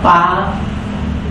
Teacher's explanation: las primeras palabras son oclusiva y vocal abierta